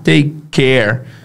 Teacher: Lembra que o último som é K e o primeiro som é K? Take care. Fica um K só, né?